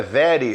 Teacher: olha o R aí, ó, como se pronuncia em inglês, com a língua para trás, né?